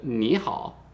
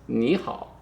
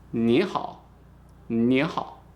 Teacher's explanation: So we put this third tone and we just turn into a second tone, like the question tone